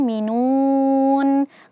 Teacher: nunnya dommah ya. Jadi bibir kita harus monyong · nu-nya dhammah ya, jadi bibir kita harus monyong, minun. Kemudian di akhir kita ketemu dengan huruf nun yang kita sukunkan.